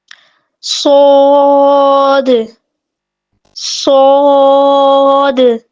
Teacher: صاد جو ہے اس کو پورا اور موٹا پڑھا جاتا ہے. ٹھیک ہے، اگر ہم اس کو پورا اور موٹا نہیں پڑھیں گے تو یہ سین کے ساتھ مکس ہو جائے گا.